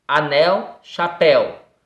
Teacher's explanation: a sílaba tônica é a última, ok? Por isso são classificadas como oxítonas.